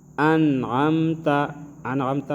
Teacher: انعمتا میں ہم اخفا نہیں کریں گے کیونکہ حروف حلقی سے حرف آیا ہے عین